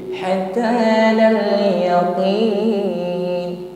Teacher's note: qaf beda, sifatnya syiddah, karakternya kuat, tekanan hurufnya, tidak ada nafas yang mengiringinya, bukan yaqi yaqi yaqi qi hatta al yaqin.